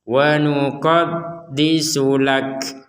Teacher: Huruf terakhirnya adalah huruf kaf. Maka kita membacanya disertai nafas. Ditertai keluarnya nafas. Makanya kalau didengarkan itu tidak murni ka seperti huruf K dalam bahasa Indonesia, tapi ada unsur, ada nafasnya yang keluar dari mulut kita.